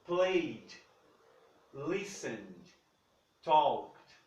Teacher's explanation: Esses verbos, por algum motivo que eu vou explicar daqui a pouco, eu não pronuncio esse E aqui. Eu não pronuncio esse E quando eu estou falando no passado.